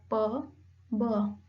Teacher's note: जो आपका upper lip है वो लोअर लिप से मिलता है, only then you produce sound like प ब।